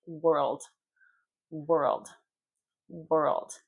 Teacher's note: Were, world, world, not world, world, were, old, LD, world. You kind of swallow the LD. Your tongue goes way back.